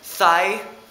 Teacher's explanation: the TH sound, like in thigh, our voiceless dental fricative